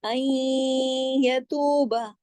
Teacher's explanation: نون ساکن کے بعد یا ہے, ادغام ہو رہا ہے, غنہ بھی ہو رہا ہے. این یتوب, تو کو بھی ہم نے 2 حرکات کھینچا واو مدہ کی وجہ سے, با کو زیادہ نہیں کھینچنا, ایک حرکت پڑھا جائے گا.